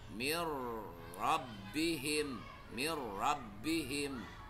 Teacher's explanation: cara membacanya itu dengan meng idghamkan nun dan tanwin ke dalam lam dan ro tetapi tanpa dengung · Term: idgham bila ghunah